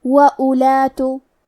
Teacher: کلمت اولات میں حرف الواو ہے لیکن ہم واو کو ظاہر نہیں کریں گے، حرف الالف کو صرف پیش سے پڑھیں گے، پھر حرف اللام کو پڑھیں گے۔ وَأُولَاتُ آخری میں تا پہ پیش ہے تو ہمیں پیش کو ظاہر کرنا ہے۔